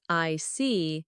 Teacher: your tone drops slightly to show calmness. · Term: Falling tone